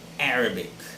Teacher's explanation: the stress should be on the first syllable